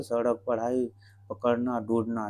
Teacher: इसका उच्चारण करते समय जीवा मूर्धा को स्पर्श करके, यानी मूर्धन्य को स्पर्श करके नीचे गिरती है। ऐसा लगता है कि जैसे अक्षर को मुख से बाहर फेंका जा रहा है। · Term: उच्छिप्त व्यंजन